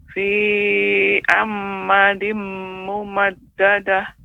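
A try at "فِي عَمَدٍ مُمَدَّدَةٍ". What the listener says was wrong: Nah, mimnya nampak lagi tasydid. Nah, tidak ada tasydid Ibu. Silakan diulangi. Fi amadim amadim. Nah, tanwin amadin bertemu dengan mim, ini kan idgham bi gunna. Maka dia harus ada tempo. Amadim mumad. Nah, kemudian koreksinya juga Ibu tetap harus memperhatikan bacaan mana yang ditasydidkan, mana yang tidak, ya.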